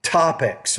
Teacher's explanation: You're not pronouncing that T with enough air.